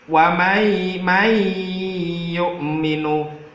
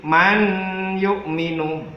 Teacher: Jadi suara nun sukunnya harus masuk ke huruf ya-nya. · Namanya bacaan idgham bi gunnah. Idgham bi gunnah, cara membacanya adalah dimasukkan sambil berdengung.